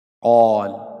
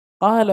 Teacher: فإذا كان الحرف الذي قبلها مفخما فخمت، مثل قال. لاحظ الألف سبقت بحرف القاف، والقاف أحد حروف الاستعلاء، إذن حرف مفخم، فحكم الألف أن تفخم